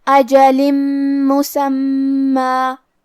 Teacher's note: کلمت مسمى میم حروف الادغام بغنہ میں سے ہے تو ہم یہ تنوین کو میم میں ملا کے غنہ اور تشدید کے ساتھ یہ حکم کو ادا کریں گے · کلمت مسمى میں میم پہ تشدید ہے تو ہمیں 2 حرف کے برابر میم کو پڑھنا ہے اور کیونکہ اس پہ تنوین زبر ہے پھر حرف الالف آتا ہے.